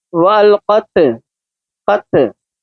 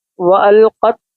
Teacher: इसकी ता की आवाज़ दब जाएगी, वहाँ से उठनी नहीं है, ना इसकी आवाज़ लौटती हुई महसूस होनी है, क्योंकि हुरूफ़ क़लक़ला नहीं है।